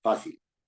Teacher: lleva acento en la penúltima, en la sílaba fa, y específicamente en la vocal A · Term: palabra grave